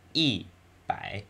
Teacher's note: notice how the tone in E changes when placed in front of the by it's the fourth tone